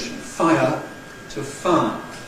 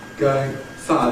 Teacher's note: You remember we can change ‘fire’ [ˈfaɪə] to [faə]. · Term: smoothing